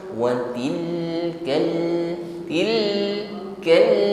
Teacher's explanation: Bukan watilka, tilka, tidak boleh dipantulkan ya. Alirkan sebagian suara pada huruf lam sukun, tawassut namanya.